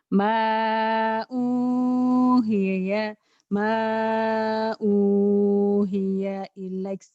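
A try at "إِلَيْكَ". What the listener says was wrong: ilaiknya jadi panjang. Ma'uhiya ilaik gitu ya.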